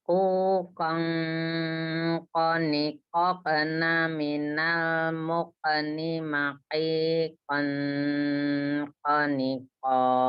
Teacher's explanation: kalau di sini ada tanwin ketemu dengan kof, mikirnya jangan di ke n tapi ke eng. NG. Ya, jadi cuman tambah di dengungnya ditebalkan.